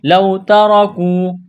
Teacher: واو لین ہے، بغیر کھینچ کے پڑھنا ہے ، تا کو باریک کرنا ہے، را کو موٹا کرنا ہے،